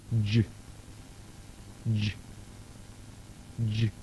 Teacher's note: the breath is first stopped and then restricted. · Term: voiced j